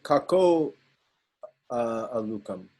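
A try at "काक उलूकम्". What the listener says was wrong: Ulukam, kaka ulukam, not kako, kaka ulukam, no bisarga. Kakaha ulukam, kaka ulukam. Ekaha uluka, eka uluka. Kakaha ulukam, kakaha ulukam. Visarga disappear. Visarga either disappears or turn into wo. Most of the time, visarga either disappear, most of the time, visarga followed by vowel disappear. Except O. Except O.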